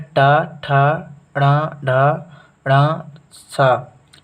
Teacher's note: तालु और दांत के जो बीच का भाग होता है उसे मूर्धन्य कहते हैं